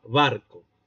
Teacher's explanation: Allí la B es completamente oclusiva.